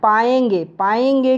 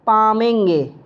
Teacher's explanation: ब्रज भाषा में य की जगह पर म का प्रयोग होने लगता है। य जहाँ जहाँ पर वो शब्द में य आता है हिंदी में, उस य के बदले वे म का प्रयोग करते हैं।